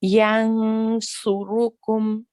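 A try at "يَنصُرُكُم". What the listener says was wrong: Okay, so what I think what's happening here is you're at the moment you're only managing to focus on one thing. So either you're getting the back of the tongue right, or you're getting the front of the tongue right.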